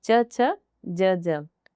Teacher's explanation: स्पर्श संघर्षी व्यंजन है, स्पर्श संघर्षी वही च वाला जो वर्ग होता है वो स्पर्श संघर्षी होता है